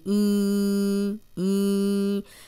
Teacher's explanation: نون ساکن کے بعد جب یا آیا ہے تو اس غنہ میں یا کی آواز آ رہی تھی